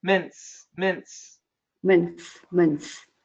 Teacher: NTS is difficult. You can just cancel the T. No T. Mince.